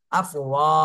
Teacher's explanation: জবরের বামে খালি আলিফ, মদের হরফ, এক আলিফ টান দিতে হবে।